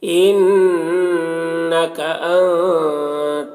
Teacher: ان کا نون مشدد غنہ کے ساتھ پڑھیں گے، ان تک نون میں اخفا ہو رہا ہے